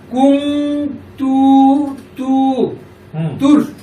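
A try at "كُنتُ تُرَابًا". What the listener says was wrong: এই তুর কেন বলতেছো? তা তো রকে ধরেন, এখানে কি তোমার ইয়ে আছে, সাকিন আছে? এখানে তো কোনো সাকিন নাই। কুনতু তুরাবান, আবার বলো।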